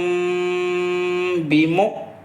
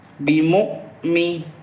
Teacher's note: حمزہ ساکنہ کے پڑھنے میں جھٹکا ہوگا، واو نہیں پڑھا جائے گا، حمزہ ساکنہ پڑھا جائے گا